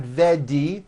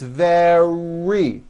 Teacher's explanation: the r occurs in middle of the word it's not a D sound the word is not vedi or Vani it's very make sure